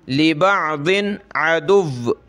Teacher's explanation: तनवीन का इख्फा नहीं हो रहा